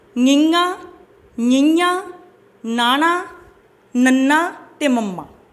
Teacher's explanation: ਤੁਸੀਂ ਦੇਖ ਰਹੇ ਹੋ, ਇਹ ਸਾਡੀਆਂ 5 ਨਾਸਕੀ ਜਾਂ ਅਨੁਨਾਸਕੀ ਵਿਅੰਜਨ ਧੁਨੀਆਂ ਨੇ। ਜਦੋਂ ਅਸੀਂ ਇਹਨਾਂ ਧੁਨੀਆਂ ਦਾ ਉਚਾਰਨ ਕਰਦੇ ਹਾਂ ਤੇ ਆਵਾਜ਼ ਸਾਡੇ ਨੱਕ ਵਿੱਚੋਂ ਨਿਕਲਦੀ ਆ।